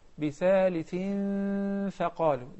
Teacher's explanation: There is إخفاء, right? إخفاء حقيقي. So the غنة is two counts.